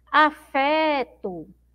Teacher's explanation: a sílaba mais forte é o fé